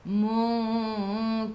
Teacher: ikhfa hakiki dengung 2 harakat, bawa ke sisi huruf kaf.